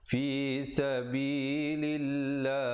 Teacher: lafzul jalalah datang sebelumnya baris kasrah dibaca nipis